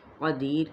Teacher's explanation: دی پہ یا مدہ اور را ساکن کریں گے تو وقف بالاسکان ہو جائے گا۔